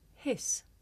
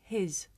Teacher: the difference between the voiceless sound s and its voiced partner z